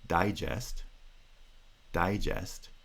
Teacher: is primary stress and the second stressed syllable has secondary stress because they're stressed neither syllable has vowel reduction there's no pronunciation of schwa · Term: two stresses